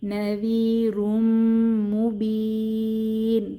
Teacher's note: তানভীনের পরে মিম এসেছে ইদগম উইদ গুন্নাহ বা গুন্নাহ সহ মিলিয়ে পড়বো নাভিরুম মুবিন তিন আলিফটা এনে ওয়াকফু করবো যে নুনের উপর আরজি